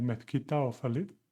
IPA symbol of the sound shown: θ